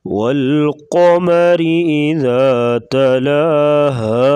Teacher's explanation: قاف کو موٹا کریں گے اور را کے نیچے زیر ہے تو را کو باریک پڑھیں گے اور ذال کو نرمی کے ساتھ پڑھا جائے گا۔